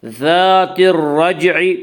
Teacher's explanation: اس کا قاعدہ ہے کہ را مشدد متحرک کے اوپر زبر اور پیش ہے تو را مشدد متحرک کو پر پڑھا جائے گا، را مشدد متحرک کے نیچے زیر ہے تو را مشدد متحرک کو باریک پڑھا جائے گا، یا را مشدد متحرک کے اوپر زبر اس لیے را مشدد متحرک کو پر پڑھیں گے۔ مشدد کہتے ہیں اس حرف کو جس کے اوپر تشدید ہو۔